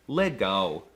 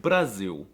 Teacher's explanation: The L is also quirky because it's often pronounced as a W, like in the word legal.